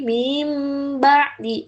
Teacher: Jadi nun matinnya tidak dibaca langsung ke ba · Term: iqlab